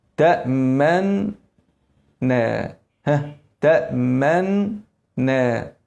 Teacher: هتضم بعد ما تبدا في النون وبسرعه ترجع تاني للفتحه عشان ما يبانش في الفتحه انها مضمومه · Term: الاشمام